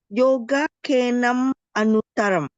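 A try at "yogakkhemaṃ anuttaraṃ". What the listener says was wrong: There's no N. There's no N here. no N. Yoga Kema.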